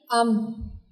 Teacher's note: दोनों होंठों के खुश्क हिस्से से मीम अदा होता है। हमजा ज़बर मीम, अम।